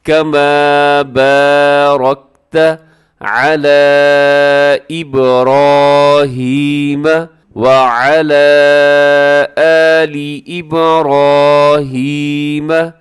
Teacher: اس میں را موٹا پڑھا جائے گا، باقی سب باریک پڑھے جائیں گے